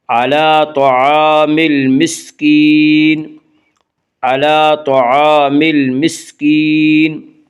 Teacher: طعام المسکین، الف لام اگر حروف قمری کے شروع میں ہوں تو صرف لام پڑھا جائے گا، الف کو نہ پڑھیں گے۔ میم یا حروف قمری میں سے ہے، میم سے پہلے الف و لام ہے، اس لیے صرف لام کو پڑھا جائے گا، الف کو نہ پڑھیں گے۔